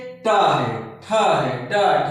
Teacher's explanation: मूर्धा का मतलब कि जैसे कि है ट, तो हमारी जीवा जो है मूर्ति है और जो मुख का छत है उसके पिछले हिस्से में जाकर के टच करती है, तो इसलिए इसे जो है मूर्धन्य ध्वनियां कहते हैं।